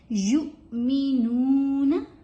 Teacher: یا کے بعد حمزہ ہے تو تھوڑا سا دھکا لگے گا، تھوڑی سی پشنگ ساؤنڈ بنے گی